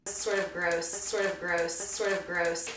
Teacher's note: We'll want to link the D to the next word which begins with a vowel, sort of, so it sounds more like one word than two separate units.